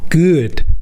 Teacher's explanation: Say “good”, but do not pronounce the “oo” part with your lips rounded. Pronounce the “oo” part with your lips flattened.